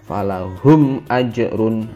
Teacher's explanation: dibaca jelas, ada mim mati bertemu hamzah atau alif yang berharokat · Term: idhar syafawi